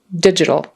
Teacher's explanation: And that T is more like a soft D. Digital, not digital.